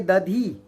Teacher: ये ध चौथी ध्वनि है महाप्राण, दूसरी और चौथी ध्वनि महाप्राण होती है